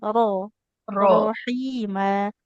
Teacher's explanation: huruf ro tebal karena fathah